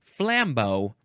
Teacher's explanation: the emphasis is on the first syllable